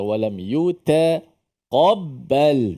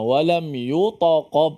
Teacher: Huruf ta di situ dinipiskan.